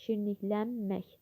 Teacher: Sözdəki mək şəklində, belə deyək, mək yox, lən şəkilçisə olur. N samiti m kimi tələffüz olunur. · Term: qoşa M samitləri